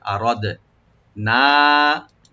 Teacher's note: দাল একটু হালকা কলকলা করতে হবে, মানে ইকু করতে হবে। আরাদ না, নুন এখানে আমরা 3 আলিফ করে টানবো, এর মধ্যে মুনফাসিল।